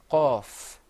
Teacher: the off is pronounced full mouthed you kind of purse your lips a little bit